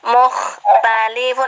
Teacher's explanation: Mukhtalifun, ada getaran di situ karena makhrajnya itu mengalir. Kho itu kan tebal, pangkal lidah kita menaikkan. Kalau pangkal lidah kita nggak naik, tidak akan berbunyi tebal.